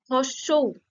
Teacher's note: জীবটা দেখো পিছনের দিকে সরে যাচ্ছে তাই না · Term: পশ্চাৎ